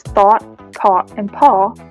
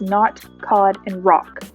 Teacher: california dialect is the caught caught merger this merger means that words such as thought caught and paw are pronounced with the same vowel sound as not cod and rock therefore there is an absence of the open o vowel sound